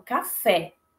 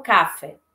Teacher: na palavra café, eu tenho a sílaba tônica fé e uma sílaba pré-tônica, ou seja, ela vem antes da tônica. Sílaba K. Então, eu não falo caf, eu falo café.